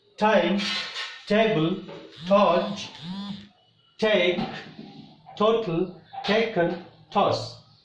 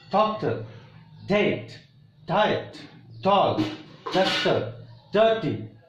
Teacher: air is stopped behind tip of the tongue and teeth ridge. And when we release the air, all of a sudden we get sound t and d